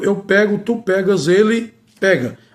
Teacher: E neste caso, a vogal e permanece com o timbre aberto. · você só deve usar o verbo pegar com o timbre aberto, com o E, com o timbre aberto, pego. Você só pode usar se o verbo estiver no presente do modo indicativo.